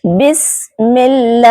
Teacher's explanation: सबसे पहले बिस में सीन को सीटी की आवाज के साथ अदा करना है, बिस्मिल्लाही। यहाँ देखिए अल्लाह के नाम से पहले जेर है, तो यहाँ अल्लाह पाक के नाम को बारीक अदा करेंगे